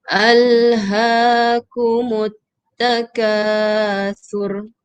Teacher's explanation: Salah ya. Sebab sa dengan ra pendek saja, tak ada huruf waw kat situ, tak ada mad asli.